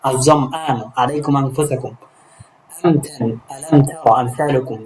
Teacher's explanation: সুতরাং এক্ষেত্রে উভয়টাকে ইজহারে শাফাওয়ি অর্থাৎ ইজহার করে পড়তে হবে, গুণা করা যাবে না